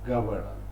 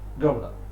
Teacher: in british english governor swallowing one syllable this is called clipping